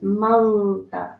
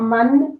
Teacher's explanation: an ikhfa sound, so it's a partially hidden noon